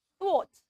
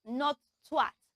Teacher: It has the voiceless TH sound, and the O sound and ends with a T sound.